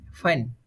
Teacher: আমরা যখন এফ উচ্চারণ করি হ্যাঁ এফ টা উচ্চারণ হবে এরকম উপরের দাঁত এবং নিচের ঠোঁটের সাথে বাজবে